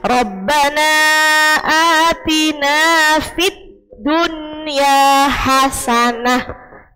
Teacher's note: satu kata maka tidak boleh dibaca mendengung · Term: izhar mutlak